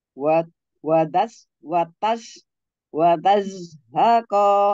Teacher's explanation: Zai dipasihkan lagi ya ujung lidah mengarah ke gigi seri di bawah